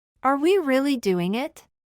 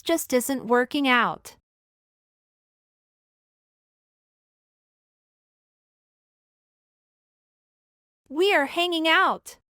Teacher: algunas veces podríamos percibir el sonido nasal velar y en otras casi solo el sonido de la n pero en ninguna percibiremos el sonido de la G Al final de la palabra